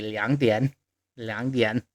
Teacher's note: 2 is a third tone, a dipping tone, so it changes to a second tone. 点 is also a third tone.